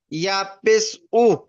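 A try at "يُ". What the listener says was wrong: ইয়া পেশ ইউ। উ নয়, হামজা পেশ উ হয়। ইয়া পেশ ইউ। ইয়া পেশ ইউ হয়, হামজা পেশ উ।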